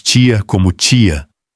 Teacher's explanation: O brasileiro palataliza o T antes de I